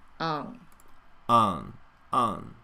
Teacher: So that last N in on is not clear because we're closing the mouth.